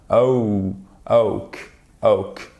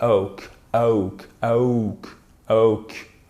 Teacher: Il s'agit d'un double son, mais vous faites un glissement entre le premier son et le deuxième son qui est le second son, pardon, qui est légèrement moins puissant. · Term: diphtongue